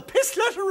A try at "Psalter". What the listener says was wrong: Salter, Mr. Chairman, Salter. P-S-A-L-T-E-R, Salter, not Pistleter. The P is silent.